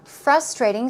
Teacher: stress goes right there on the first syllable